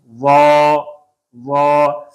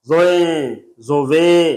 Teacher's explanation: اور دوسرا یہ کہ وا کے اوپر زبر ہے، واہ، اور آگے الف ہے، وا، آگے الف ہے تو الف تک کی آواز رکھیں، الف کو ٹیڑھا نہ کریں، زوئیں، زووے، یہ چیز بالکل نہ ہو، نرم حروف ہے نرم پڑھیں، موٹا ہے موٹی فل ساؤنڈ آواز نکالیں، اور زبر ہے اور الف ہے تو ہونٹ کھلے اور پھر تو کھلتا جائے اور آخر تک کھلا ہی رہے، اس میں ہونٹ بالکل گول نہیں کرنے